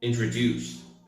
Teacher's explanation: the word introduce is pronounced with a stress at the end, so it sounds more like this: introduce, not introduce, not introduce, but introduce.